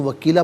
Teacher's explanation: یہاں وقف پڑھیں گے تو وکیلا پڑھیں گے، اس لیے کہ 2 زبر کی ترمیم وقف میں الف سے چینج ہو جاتی ہے